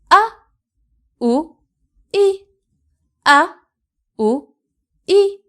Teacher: hamza with fatha is a, like a in Ahmad. Hamza with dhamma is pronounced like u, and hamza with kasra is I.